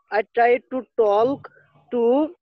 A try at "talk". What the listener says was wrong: উচ্চারণটা টক। ওকে, এল এর উচ্চারণটা হবে না। Try to টক।